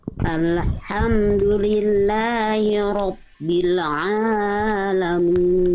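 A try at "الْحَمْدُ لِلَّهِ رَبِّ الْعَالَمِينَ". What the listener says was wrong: Ainnya kepanjangan Bunda, 2 harokat. Alhamdulillahi rabbil alamin.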